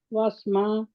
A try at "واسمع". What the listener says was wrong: عین بھی پڑھے نا، واسمع آپ پڑھ رہے ہیں بالکل. واسمع عین پڑھنا ہے نا.